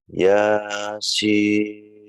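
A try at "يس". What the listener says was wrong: Ah, jangan kepanjangan ya-nya karena ini 2 harokat. Yasin. Nah, 2 harokat.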